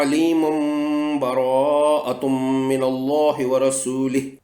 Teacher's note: اس صورت میں چونکہ تنوین کے بعد حرف با آئے گا، اس لیے یہاں اقلاب کے قاعدے کے مطابق تنوین کے پوشیدہ نون کو میم میں بدل دیا جائے گا